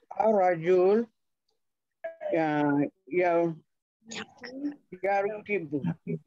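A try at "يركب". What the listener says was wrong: Rakiba ya rakibu. Betul dah tu.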